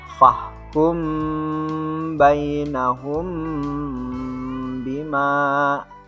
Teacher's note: Nah, ini disebut dengan hukum tajwid izhar syafawi. Dengan cara bacanya adalah menjelaskan mim yang sukun.